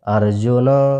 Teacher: न में जो अ मिला हुआ है उसकी भी ध्वनि आनी चाहिए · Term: अंतिम अ